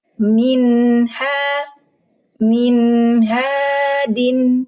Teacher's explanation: Nun sakinah ketemu huruf ha. Huruf halki, huruf tenggorokan. Dihukumi izhar hal. Suara nun sukun dibaca izhar. En. Jelas.